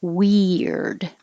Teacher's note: your tongue goes high we and then slides down and makes an r so it's almost like a y in the middle weird and